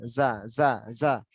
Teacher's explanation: জাটা শক্ত হবে, জিহ্বার আগা থেকে শক্ত করে উচ্চারণ